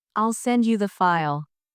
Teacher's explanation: in the phrase, I'll send you the file, the stress is on send and file.